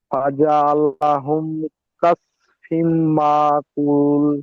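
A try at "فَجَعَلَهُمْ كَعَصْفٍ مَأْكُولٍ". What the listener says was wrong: আরে কাস হয়ে যাচ্ছে, কাব জবর কা, আইন সদ জবর আস, আসটা হচ্ছে না। কা, কাআস, কাআস।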